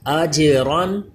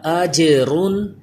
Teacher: را پر پڑھا جائے گا کیونکہ 2 زبر ہیں